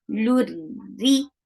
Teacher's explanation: And attach lam with ra. Ra will be light here because there is kasra under it